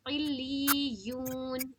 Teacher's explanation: लाम को भी 2 बार और या को भी 2 बार पढ़ी जाएगी। इल्लियून, ये वाली लफ्ज़ हम लोगों ने मश्क भी की थी ना, याद है आप लोगों को? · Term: तशदीद